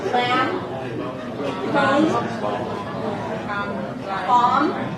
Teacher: then the ending, there is no B.